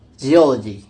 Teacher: the primary stress shifts to the syllable immediately preceding the suffix, resulting in geology. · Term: stress-attracting suffix